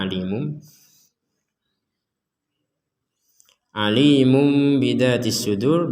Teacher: membalikkan tanwin atau Nun menjadi mim